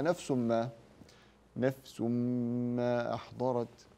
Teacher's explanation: تنوين بعده حرف الميم هذا ادغام بغنه لان الميم من حروف يرملون وهي من حروف ينمو فندم التنوين